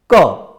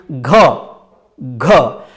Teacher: जब हम घ उच्चारण करते हैं तो एक गमक, एक गूंज सी सुनाई देती है, जिसको घोष कहा जाता है। लेकिन क उच्चारण करते समय वह गूंज सुनाई नहीं देती।